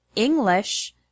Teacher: the word English has the stress on the first syllable, ing. The word improve has the stress on the second syllable, prove.